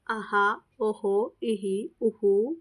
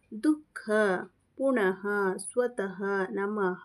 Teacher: ವಿಸರ್ಗವನ್ನು ಬಳಸುವಾಗ ಹಕಾರಕ್ಕೆ ಸಮೀಪವಾದ ಉಚ್ಚಾರವನ್ನ ಬಳಸಬೇಕು